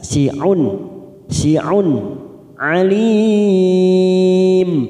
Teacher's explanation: Si'un di tanwin bertemu ain idhar halqi, kita baca jelas si'un.